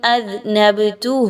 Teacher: ذنب اذنبتہ، با پر جزم کا نشان ہے، با حروف قلقلہ میں سے ہے، ہم سب جانتے ہیں، با کو تھوڑا سا ہلا کے پڑھا جائے گا قلقلہ کرتے ہوئے